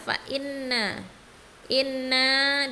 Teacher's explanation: hukum ghunnah bacanya didengungkan panjang dua harakat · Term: hukum gunnah